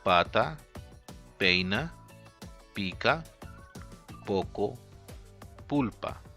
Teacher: notice that there is no aspiration in it · the Spanish phoneme P only has one allophone, which is a voiceless bilabial stop unaspirated